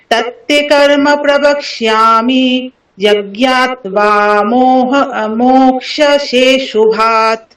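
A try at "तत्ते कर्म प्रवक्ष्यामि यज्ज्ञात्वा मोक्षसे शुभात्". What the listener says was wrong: ঠিক আছে, ভালো হয়েছে আপনার।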